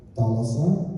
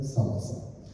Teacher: one of the most famous Laconian sound shifts of theta to sigma. So where in Attic you get Thalassa, in Laconian you get Salasa.